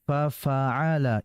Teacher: fa ini huruf yang bersifat hamas ya. Artinya udaranya keluar, desisan keluar.